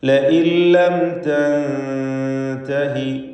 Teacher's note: ലഇൻ ലം തൻതഹി, ഇവിടെ ലഇൻ എന്നതിൽ സക്കിനത്തായ നൂനുണ്ട്, ശേഷം ലാമുണ്ട്. ഇദ്ഗാം ബിഗൈരി ഗുന്ന നൽകി നൂനിനെ പൂർണ്ണമായും ലാമിൽ ലയിപ്പിച്ച് ലാമിനെ മാത്രം ഉച്ചരിക്കണം